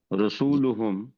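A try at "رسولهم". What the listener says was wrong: नहीं रू न पड़े ना, रा पड़ी। रसूलुहुम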